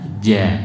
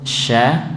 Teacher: Kalau jim nempel, kalau shin hanya mendekat.